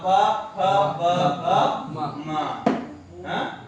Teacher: एतेषाम् उच्चारणस्थानम् ओष्ठौ ओष्ठौ इत्युक्ते अधरम् ओष्ठम् द्वयमपि ओष्ठौ द्विवचनं प वाभ्यां वदामः अधरेण अपि ओष्ठेन अपि अतः किमस्ति ओष्ठौ